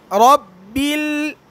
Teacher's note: বা লাম কি হবে উচ্চারণে পাতলা হবে